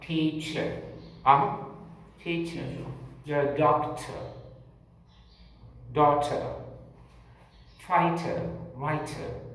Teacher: If the word is teacher, teacher, your doctor, daughter, fighter, writer, R towards the end is not pronounced. But in American English, that R is pronounced.